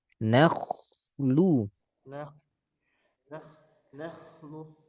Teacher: Kho sukun diawali fathah tebal